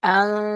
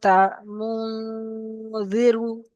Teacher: নাকের ভিতর থেকে আওয়াজটি বের হবে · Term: গুণনা